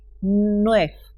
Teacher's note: El sonido de V final de la palabra aparece pronunciado como F